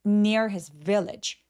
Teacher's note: near his village 할 때 near a village가 내용어, 즉 중요한 키워드이기 때문에 중요한 키워드들의 강세 부분만 항상 이렇게 오렌지색을 처리해 드렸어요. 그래서 his가 잘 안 들리게 near his village 라고 강세 외의 나머지 부분은 힘을 쫙 빼주세요